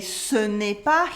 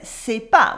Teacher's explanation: Dropping the ne in the negative sentence.